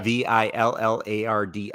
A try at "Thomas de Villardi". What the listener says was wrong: I think you got Villarte, maybe. You got to use kind of like in French.